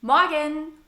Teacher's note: we don't pronounce the R in the word morgen. It's a so-called silent R.